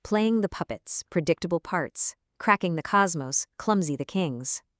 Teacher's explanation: Notice those heavy explosive P and C consonants.